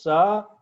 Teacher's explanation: स is a fricative alveolar voiceless